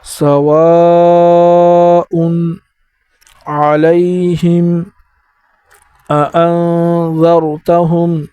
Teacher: الف پر مد آیا ہوا ہے تو اس کو بھی 3 الف کی مقدار پر کھینچیں گے